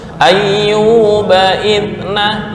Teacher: Di tasydid Ayyub nggak boleh lama.